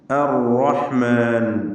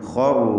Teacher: അലൈഹിം ആയാതുർ റഹ്മാൻ അർ-റഹ്മാൻ ശേഷം ഖറു ഇവിടെയൊക്കെ ഷദ്ദുള്ള റാ ഉണ്ട്. തക്രീറിനെ സൂക്ഷിച്ചുകൊണ്ട് റാ തഫ്ഖീം ചെയ്ത് ഉച്ചരിക്കുക